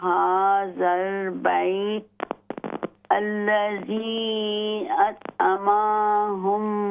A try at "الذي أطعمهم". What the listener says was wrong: لمبا نہ کریں. أطعمهم